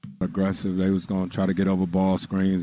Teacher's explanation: i'm hearing a stress on aggressive i'm hearing a stress on ball screens